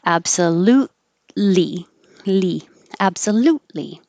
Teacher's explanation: several actually absolutely you don't hear this t either because absolute the tongue is in the t position and then you have li so you just hold it there